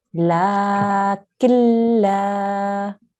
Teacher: Okay, so this rule, if you look carefully, what we need to do is, because there is a lam here with the shadda on top, okay, you need to ignore the noon sound here, and you will join your kaf directly to your lam. Okay, the kaf will join directly to the lam here.